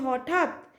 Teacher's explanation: এবার ঠাত টানা যাচ্ছে না তাই এটা রুদ্ধদল হবে